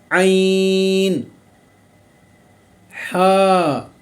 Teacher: ये जो हरूफ हैं ये हलक का जो दरमियानी हिस्सा है वहाँ से अदा होते हैं, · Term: आइन और हा